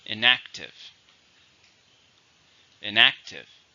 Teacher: 3 syllables, stress on the second.